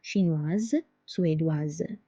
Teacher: Because S is between two vowels, I and E, it's pronounced as Z.